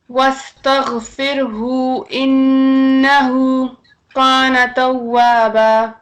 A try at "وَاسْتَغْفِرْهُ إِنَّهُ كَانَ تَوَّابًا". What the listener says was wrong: کانا میں کاف باریک رہے گا، موٹا نہ کریں. واستغفرہ انہو کان توابا. إنه إنه كان توابا.